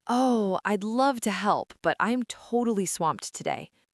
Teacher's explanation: Your voice goes up on the word love, showing enthusiasm, and then drops low on the word swamped, showing exhaustion.